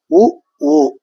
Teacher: இதழ்களை குவிப்பதால் பிறக்கும் எழுத்துக்கள் உ ஊ 2 எழுத்துக்களும் இதழ்களை குவிப்பதால் பிறக்கும் எழுத்துக்கள்.